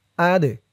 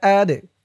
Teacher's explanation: টান খারা জবর যালিকা লিকা যালিকা আদে হামজা দিয়ে দাল ধরবে দালটা কলকলার হরফ ধাক্কা দিয়ে পড়তে হবে